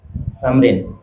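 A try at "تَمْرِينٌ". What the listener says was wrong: Harus dengan harakat akhir.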